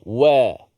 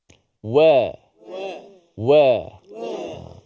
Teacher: Nipis ni huruf yang mendatar. Suara kita tak meninggi ke atas. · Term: huruf yang nipis